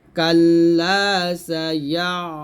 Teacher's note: আইনটা চাপ দিতে হবে, কাল্লা সায়া, এরকম আইনের চাপ দিয়ে ধরে রাখবেন